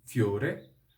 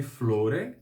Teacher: Nesse caso, o L do italiano vira um I. Em vez de flore, temos fiore.